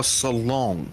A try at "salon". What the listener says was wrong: There's just something about your accent today that it sounds like you're putting an a G on the end, right?